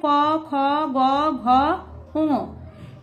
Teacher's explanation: এই বর্ণগুলি উচ্চারণ করতে গেলে আমাদের কণ্ঠের প্রয়োজন হয় তাই এগুলিকে কণ্ঠধ্বনি বলে